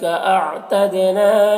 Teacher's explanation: اعتدنا دال میں قلقلہ ہوگا ، نام الف مدہ ہے، لہم کے میم میں اظہار شفوی